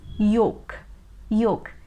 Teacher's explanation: so they pronounce it as yolk which is a wrong pronunciation this l is always silent and that is why we don't pronounce it